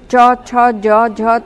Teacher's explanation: বর্ণ খ তালব্য ব্যঞ্জন চ ছ জ ঝ তালবস তালব্য ব্যঞ্জন জিহবার অগ্রভাগ তালুর সম্মুখ ভাগ বা শক্ত তালুতে শ্বাসবায়ু নির্গমনে বাধা দেওয়ায় তালব্য ব্যঞ্জন ধ্বনি উচ্চারিত হয়